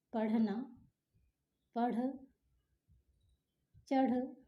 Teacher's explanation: उत्क्षिप्त व्यंजन के उच्चारण में जिह्वा ऊपर उठ करके अचानक से नीचे आती